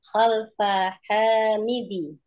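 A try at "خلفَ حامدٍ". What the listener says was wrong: Khalfa Hamidin. Tanwin.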